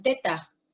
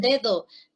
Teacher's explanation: la d y la t son sonidos dentales porque la corona la lengua la puntita de la lengua se